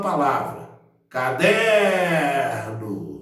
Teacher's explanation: Eu demorei no der. Então, der é a sílaba tônica, então, da palavra caderno.